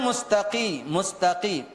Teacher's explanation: apa kemudian mustaqi mustaqi qo huruf qo ini huruf yang ee makhrajnya di Pangkal lidah yang paling dalam berbeda dengan Kaf kalau Kaf dia sudah berada di luar agak maju ke depan daripada qof kalau Q itu berada di di dalam Jadi mustaqi mustaqi bukan · Huruf qa ini huruf yang makhrajnya di pangkal lidah yang paling dalam. Berbeda dengan kaf.